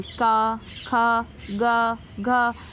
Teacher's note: ये कंठ से आवाज़ आ रहा है ना, बिल्कुल कंठ से, कहीं भी दांत, होठ या जीभ का कोई इस्तेमाल नहीं हो रहा है